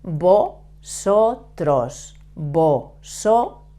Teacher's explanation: to pronounce the V in Spanish, we pronounce it like a B, but soft.